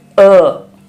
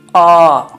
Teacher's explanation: अ में प्राणवायु कम निकलती है और आ में ज्यादा निकलती है। तो अ ह्रस्व है और आ दीर्घ स्वर है।